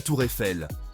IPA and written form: tuʁɛfɛl (tour Eiffel)